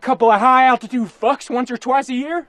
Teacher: Listen to the vowel in one and once, how it's all the way back in his mouth.